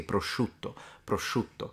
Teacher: The intensity of the SH sound, the sh, depends on where you're from in Italy. In the sense that the further south you go, the stronger that one becomes.